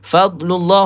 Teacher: Fadlullah huruf dad, tepi lidah, jangan qalqalahkan dia dan kena tebalkan